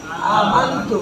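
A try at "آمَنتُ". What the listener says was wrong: আমাদের স্পষ্ট হয়ে গেছে, কিন্তু আমি বলতে যে আ মান একদম মান গুণের উচ্চারণে স্পষ্ট করবো না, আমরা কি করবো না গুণের দিকে চলে যাবো। বাংলাতে অনুসার মতো, বাংলাতে অনুসার যে উচ্চারণটা, ঠিক আছে? তাহলে আ মান বলেন আ মান কেউ যদি বলে আ মান তাহলে অস্পষ্ট হয়ে যাবে। বলেন আ মান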